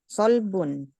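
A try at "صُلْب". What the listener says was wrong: Sul, bukan sa. Sulbun. Sulbun.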